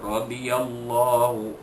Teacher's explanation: ra itu baris atas dibaca tebal